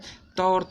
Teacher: त और थ की बात करिएगा दंत से है